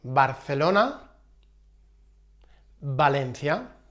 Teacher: B and V have the same sound in Spanish.